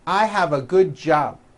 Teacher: without a b sound or the B is so weak you don't even hear it